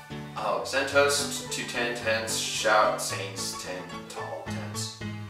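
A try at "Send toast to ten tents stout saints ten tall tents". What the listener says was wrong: That's stout and shout.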